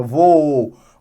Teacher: A gente vai entender, então, que aqui, ó, eu vou ter a separação em sa, u, vá. Se é voo, ó, sempre que a vogal dobrada for a mesma, é hiato. Não tem como, porque as duas têm o mesmo ponto de articulação, tá? Eu não consigo ter, o voo, a primeira é mais forte do que a segunda.